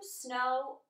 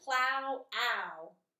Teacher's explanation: W can also make just a long o sound oh and it can also make the owl sound